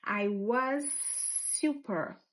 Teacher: I was, esse S vai juntar com esse, porque isso sempre vai acontecer. A palavra terminou com som, a próxima começou com o mesmo som, a gente vai fazer um som só.